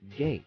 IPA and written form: ɡeɪt (gate)